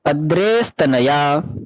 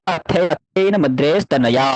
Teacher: तो पीछे तकार है, तो विसर्ग का हुआ स